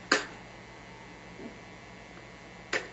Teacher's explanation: K, K, unvoiced and staccato.